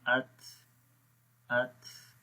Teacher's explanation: تا کے اندر صفت ہمس ہے جس میں سانس جاری رہتا ہے